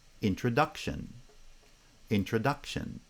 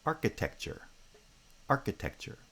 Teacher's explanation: introduction and architecture architecture so the stress patterns are different because introduction has primary stress on the second foot and architecture has primary stress on the first foot · introduction has primary stress on the second foot, and architecture has primary stress on the first foot. But within each bisyllabic foot, the first syllable has stress, the second syllable does not.